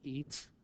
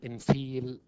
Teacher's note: The front, close, long, unrounded vowel is the E sound.